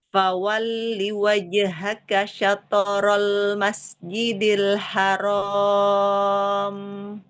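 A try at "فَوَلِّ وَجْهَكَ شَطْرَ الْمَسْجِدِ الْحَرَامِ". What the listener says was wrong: Angkat lagi pangkal lidahnya biar tebal.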